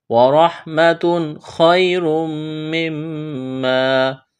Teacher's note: تنوین کے بعد خواہ حروف حلقی ہے، یہاں پر اظہار کریں گے، غنہ نہیں کریں گے